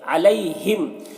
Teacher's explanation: یہاں پر یا لین ہے، اسے نرم آواز کے ساتھ جلد پڑھیں گے